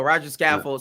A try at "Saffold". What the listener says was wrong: Scaffold. Saffold. No C in there.